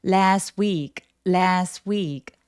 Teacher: 지난주 할 때 STW 이렇게 자음이 한꺼번에 뭉쳐있을 때 중간에 오는 T나 D를 발음을 잘 안 하는 게 또 원어민의 특징이에요. 그래서 발음하실 때에도 T 발음을 없으면 훨씬 더 자연스럽게 발음하실 수 있을 거예요.